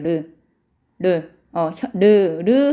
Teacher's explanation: 르 하면서 여러분 혀끝이 잇몸에 가볍게 닿았다가 떼어지죠. 그리고 르 하면서 여러분 혀끝이 윗잇몸에 닿으면서 그러면 혀가 이렇게 둥글게 말리잖아요. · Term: 유음